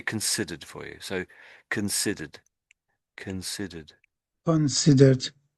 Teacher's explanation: we sort of rush the ending a little bit. So the R sort of dies a little bit.